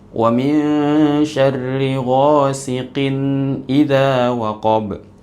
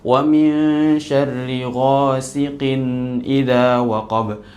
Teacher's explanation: ada seperti ditahan sebentar di tanwinnya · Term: dengung terlalu panjang